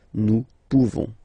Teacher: You don't pronounce the final S.